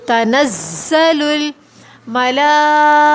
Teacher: تنزل الزا میں سیٹی کی آواز صفت پائی جاتی ہے ، سختی کے ساتھ پڑھیں گے، تنزل الملائکۃ، ملا کے اوپر